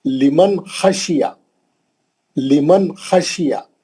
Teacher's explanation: गुन्ना नहीं करना, खींचना नहीं, लंबा नहीं करना, नून को जल्दी पढ़ना, उसको बोलते हैं इजहार।